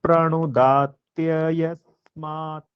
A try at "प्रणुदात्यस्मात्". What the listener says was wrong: जी प्रणुदात्यस्मात्, यह 2 बार जैसा आ गया था, वैसे ठीक है, बहुत सही।